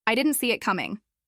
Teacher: See it connects almost like see it, or even see it. And coming ends softly, without exaggerating the final G